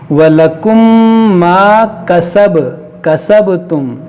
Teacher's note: ولکم یہاں غنہ کریں گے، یہاں پر ادغام شفوی ہوگا، میم ساکن کے بعد دوسری میم ہے اور با میں قلقلہ کریں گے